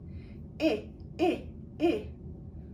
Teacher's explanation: you feel a little vibration, so that means it is voiced